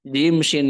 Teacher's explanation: dia menggunakan Tengah lidah dan juga langit-langit atas